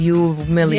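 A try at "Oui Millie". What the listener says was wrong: You Millie? It's French. It's Wee. Wee Millie.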